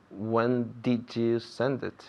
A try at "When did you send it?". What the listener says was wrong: Muy bien. The did was very clear that time.